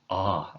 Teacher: with this improper diphthong, the alpha with an iota subscript, it might just sound like a long alpha sound. Ah, as in father.